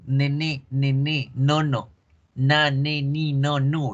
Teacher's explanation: fíjense cómo la punta de la lengua toca los alveolos y como la lengua bloquea el aire se va por la nariz. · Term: sonido nasal alveolar